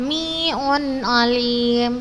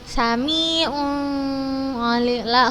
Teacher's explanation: karena ketika tanwin atau nun sukun bertemu dengan huruf ain maka kita baca jelas